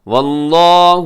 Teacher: لفظ اللہ موٹا پڑے گا کیونکہ اس سے پہلے واو کے اوپر زبر ہے